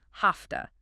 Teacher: Have to is a classic reducer because the v and have is voiced but the t in to is voiceless. The v often becomes voiceless too sounding like an f. So have to becomes have toa.